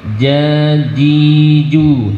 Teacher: Jim letaknya ada di wastul lisan, ada di tengah-tengah lidah kita, bukan di ujung tapi di tengah.